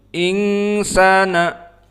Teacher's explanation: Maka pada hukum al insana di sini ada hukmu al ikhfa. Karena nun as-sakinah bertemu dengan sin, fahuwa ikhfa haqiqi. Maka dia makhrajnya dari khaysum karena gunnah. Khalaqal insana dibaca ing dari hidung, insana.